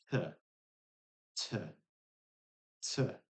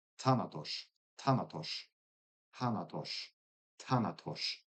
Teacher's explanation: They say it's an aspirated dental t